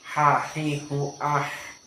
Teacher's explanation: Maka mahfud di sini mah dalam keadaan al-hamz, ha, hi, hu, ah. Jadi mah ada pengeluaran dari nafs, karena definisi dari hamz jaroyan nafs inda nutq.